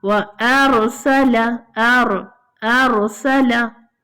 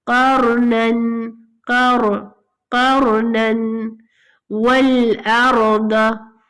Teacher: We are making ra heavy.